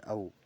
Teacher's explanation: ओ और औ ये कंठ और ओष्ठ से बोले जाते हैं।